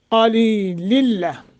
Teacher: क़लीलिल्ला क़ मोटा लिल्ला इदगाम है, गुन्ना नहीं करेंगे।